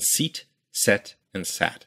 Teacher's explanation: your tongue starts up high e then goes to the middle of your mouth e and then goes down to a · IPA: [sit] [sɛt] [sæt]